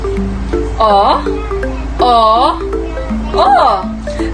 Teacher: ang letrang o naman ay likod pagitna pabilog